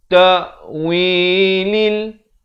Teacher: Bukan ta'wilil tapi ta'wilil. Lam balik kasrah bunyi li, bukan bunyi le ya.